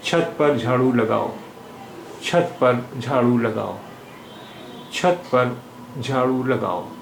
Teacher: In छत, cha is aspirated sound, and in झाड़ू, jha is aspirated sound.